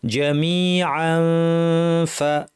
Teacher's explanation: আর যদি না থামি তাহলে এখানে জামিআন তানউইনের পর ফা আছে, আমাদেরকে ইখফা করতে হবে, দাঁত ঠোঁটের উপর এনে ফা বলার জন্য রেডি হয়ে নাক থেকে গুন্না করতে হবে